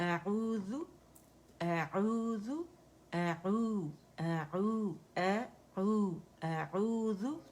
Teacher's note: حمزہ جو ہے وہ اقص الحلق سے ادا ہوگا، اور عین جو ہے وہ وسط الحلق سے